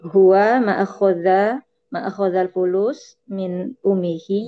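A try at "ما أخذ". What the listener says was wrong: Ma-nya agak panjang. Ma'akhoda.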